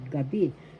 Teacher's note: The accent is in the second syllable, gabi.